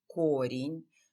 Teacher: in singular the first syllable is stressed chordin but in plural the stress is shifted or changed this